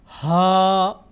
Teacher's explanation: ان دونوں میں فرق یہ ہے، ہا اس کی ادائیگی میں آواز گلے کی طرف یعنی گلے کے اندر جاتی ہے، ہا، اور دو چشمی ہا، ہا ہوا باہر کو نکلتی ہے